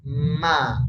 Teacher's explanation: kalau Ma rasakan anginnya keluar dari hidung